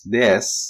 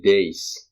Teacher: When you say days instead of des, it means that you're diphthongizing